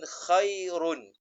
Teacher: Khairun tidak didengungkan maka ditebalkan ra tadi. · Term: ra tebal